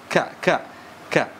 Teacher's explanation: huruf k makhrajnya di mana Aqsa alisan atau Pangkal lidah